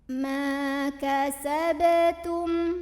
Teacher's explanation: Ada qalqalah sughra karena ada huruf qalqalah yaitu ba yang sukunnya ini sukun asli dan ada di tengah-tengah bacaan. Maka cara membunyikannya adalah dipantulkan dengan pantulan yang kecil dan ringan ya.